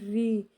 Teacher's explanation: और री अगर हम पढ़ेंगे तो जो हमारी जीभ है वो उल्टी हो जाएगी और ऊपर के साइड जा करके लगेगी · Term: मूर्धा